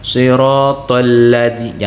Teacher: huruf lam keluarnya di pinggir lidah sebelah kanan dan ke kiri disentuhkan dengan gusi diatas jangan di ujung lidah